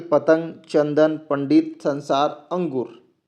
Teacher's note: इसे हम बोलचाल की ध्वनि में अंक की मात्रा बोल देते हैं। इसके उच्चारण के समय हवा केवल नाक से बाहर निकलती है, इसे अनुस्वार कहते हैं।